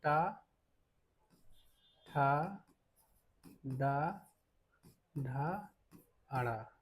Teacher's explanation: मूर्धन्य में क्या-क्या आते हैं? ट वर्ग आता है।